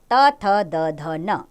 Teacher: ये व्यंजन त वर्ग के अंदर आते हैं और दंत्य उच्चारण स्थान, अर्थात इनको बोलते हुए दांतों का प्रयोग किया जाता है।